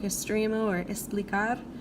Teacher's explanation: All right, X is the word for X, and it has a fairly similar sound to English if it's in between two vowels like exacto or examen. If it's followed by a consonant, it's a little bit more of an S sort of sound